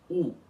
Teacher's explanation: Então, para começar, essa letra, que é o U normal, a letra U sem acento em balborano, aquela que é sem aspiração, é pronunciada como U, isto é, um U normal, sem aspiração, uma vogal simples